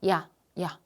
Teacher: 입이 벌어져요. 벌어진다는 건 혀가 같이 낮아지는 거야. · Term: 이중모음